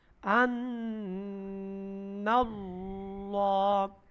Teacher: আল্লাহ শব্দের লাম মোটা হইবো